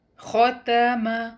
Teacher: تو اس کا مطلب ہے اس میں پڑھے جانے والے تمام حروف کو ہم شارٹ پڑھیں گے، سنگل کاؤنٹ۔ یاد رہے خو کو ہیوی پڑھیں گے، اور تا اور میم لائٹ لیٹر ہیں تو ان کو لائٹ رکھیے گا۔